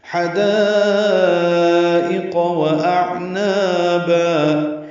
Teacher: حدائق و اعنابا، ہا وسط حلق سے ادا کریں گے، دا الف مدہ اور اس کے بعد حمزہ آنے کی وجہ سے مد متصل لمبا کریں گے. 4 حرکات سے زیادہ حمزہ یا کی شکل میں ہے، معروف طریقے سے جلدی پڑھیں گے، قاف پر پڑھیں گے.